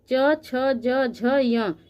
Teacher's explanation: च वर्ग की जितने भी ये वर्ण हैं ये सभी तालव्य के अंतर्गत आते हैं, क्योंकि ये हमारे तालु के स्पर्श से उच्चारित होते हैं, इसलिए इसको तालव्य ध्वनि कहते हैं।